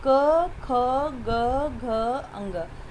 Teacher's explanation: जीभ वगैरह कहीं कुछ हिलता जुलता नहीं है, सीधे मुंह खुलता है और गले में से एक आवाज़ आ रही है ना, गले में से ध्वनि आ रही। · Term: कंठ स्पर्श